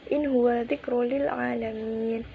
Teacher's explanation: Pada lafaz in huwa terdapat nun sukun bertemu ha, merupakan hukum bacaan idhar halqi. Cara membacanya ya dibaca secara jelas.